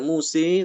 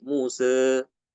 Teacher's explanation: diimalahkan tapi sedikit aja ya tidak dibaca mususe tapi Muse Mus tengah-tengah antara fathah dengan imalah itu namanya taklil